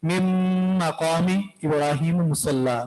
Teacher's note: من مقامی اصل میں ہے من اور مقامی، تو اس نون کو ہم میم کے ساتھ ملائیں گے اور ساتھ میں غنہ بھی کریں گے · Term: ادغام ناقص